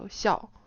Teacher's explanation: That's fourth tone, which is 5 to 1 in standard Chinese.